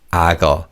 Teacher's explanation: the 기역 sound carries over to the second syllable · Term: connected speech